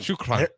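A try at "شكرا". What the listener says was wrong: got to roll it a little bit.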